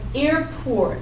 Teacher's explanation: you're always going to put the primary stress on the first syllable